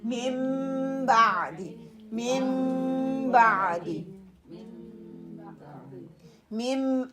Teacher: طيرا میم کہاں ہے, اب کیا ہے مم بعد نون ساکن کے بعد جب با آتا ہے غنہ کرنے کا اس میں طریقہ کیا ہوگا کہ آپ دیکھیے ہونٹوں کی اندرونی خشک حصوں کو آپس میں نہایت نرمی سے اس کو ملانا ہے. آواز کو ناک کی جڑ سے ایک الف کی مقدار میں برابر خرچ کر اور ہونٹوں کی سختی سے ادا کیا جائے گا